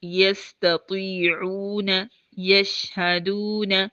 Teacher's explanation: تو ہم اس کو ہونٹوں کی، یہ واو متحرک میں بھی ہونٹ گول ہوں گے، واو لین میں بھی ہونٹ گول ہوں گے، اور واو مدہ میں بھی ہونٹ گول ہوں گے